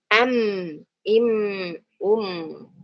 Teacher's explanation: ketika mengucapkan mim sukun dengan jelas. Im, bibir tertutup rapat. Harus bertemu dua bibir dengan rapat tadi ya.